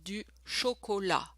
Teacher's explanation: Oh, by the way, for du chocolat, again, don't pronounce the final consonant.